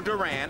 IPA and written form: dəˈræn (Duran)